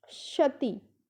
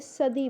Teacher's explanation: ठीक है, पांचवी शती, छठी शती, तो इस शती को हमने आजकल क्या बना दिया, इस शती को हमने सदी बना दिया, सदी, यानी कि तय को हमने द में बदल दिया। तय क्या था, अघोष था, सघोषीकरण कर दिया हमने।